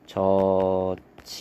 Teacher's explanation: 지읒하고 히읗하고 만나면 치읓으로 줄어들거든요. 그래서 저치다 이렇게 발음이 됩니다. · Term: 축약